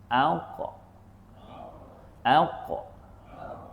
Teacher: Maka kita tahan dia melantun aq >> a >> aq >> aq. Ah qalqalah itu lantunan bunyi suara itu lebih mirip pada bunyi baris atas